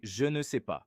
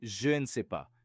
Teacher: You drop the E. It sounds faster, more natural, and more confident. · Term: silent E